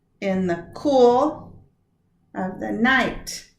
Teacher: Stress is only on cool and night, and that is one of our patterns. Unstressed, unstressed, stress. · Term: Anapest